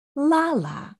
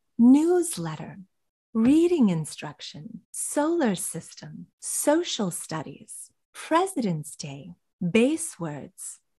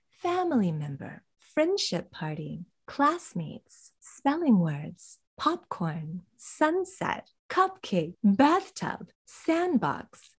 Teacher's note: listen for that intonation pattern of stressing the first part